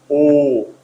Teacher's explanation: the tongue is in mid position and it is LAX not tense but also rounded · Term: mid back